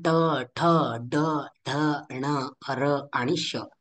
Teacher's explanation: उदाहरण म्हणून ट, ठ, ड, ढ, ण, र आणि श इत्यादी व्यंजनांचं मूर्धा हे उच्चारण स्थान आहे. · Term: मूर्धन्य